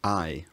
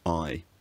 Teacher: The vowel in words like I starts with a slightly more fronted tongue position, I rather than I.